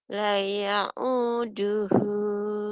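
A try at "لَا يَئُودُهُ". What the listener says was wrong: panjang laknya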